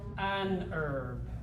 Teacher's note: I'm an American. I pronounce this word with the E first. So what do I say?